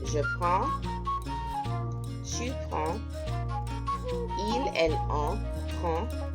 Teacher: the S's at the end of the words are not pronounced, nor most of the consonants